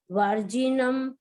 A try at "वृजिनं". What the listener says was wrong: एक सेकंड रुको, वर्जिनम नहीं है, ये वर्ड है वृजिनम। वृजिनम व के पैर में री है, वृजिनम।